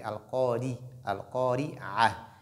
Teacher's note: lorsque Ra porte kasra, elle est légère